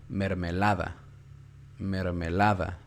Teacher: la sílaba tónica que hay en la penúltima sílaba no en la última ni en la que sigue sino en la penúltima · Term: grave